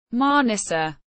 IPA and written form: maˈnisa (Manisa)